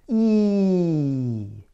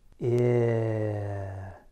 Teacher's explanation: E is a tense vowel, while I is a relaxed vowel. To make E, I have to use more tension.